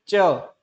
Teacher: जो हमारी जीहवा है वह हमारे तालव्य से जाकर टकराती है। तालव्य यानी कि जो तालु तालू का भाग जो कहते हैं जो कि दांतों और मसूड़ों से ऊपर का होता है।